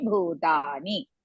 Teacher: bhu maha prana as well as dirgha, ta dirgha, ni hrisva.